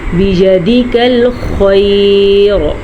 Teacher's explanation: خا ہمیشہ ہی پر پڑھی جاتی ہے, جبکہ را کو بھی پر پڑھیں گے, کیونکہ اگر ہم وقف کریں گے تو را ساکن ہو جائے گی. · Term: خا کو پر